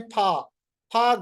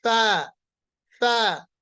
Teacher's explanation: اکثر جو غلطی ہوتی ہے ہم پڑھتے ہیں پھا، پھا غلط ہے، انہیں پی کی طرح نہیں پڑھنا، یہ ایف کی طرح پڑھنا ہے۔ فا، فا، دونوں ہونٹ نہیں ملیں گے، صرف اوپر کے 2 دانت سامنے والے، ان کا کنارہ اور نیچے کا جو ہونٹ ہے اس کا اندرونی حصہ